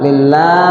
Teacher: lafzul Allah dibaca tipis ya. Dibaca tarqik.